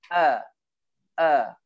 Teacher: Hamzah sifat dia tertahan. Maksudnya dia kalau kita sebut, dia macam suara kita akan tersekat dulu.